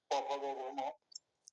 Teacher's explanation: একটা হচ্ছে কোনটা এটা প বর্গ না, এখানে জিভের ব্যাপার নাই। প বর্গ হলো উপরের ঠোঁট আর নিচের ঠোঁট, উপরের ঠোঁট যোগ নিচের ঠোঁট।